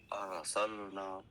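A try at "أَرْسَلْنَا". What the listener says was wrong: ار نہیں، اور تو تھوڑی سی آواز را کی موٹی کر کے پڑھو، منہ کھولو تھوڑا سا۔ ارسلنا، ہاں، ارسلنا،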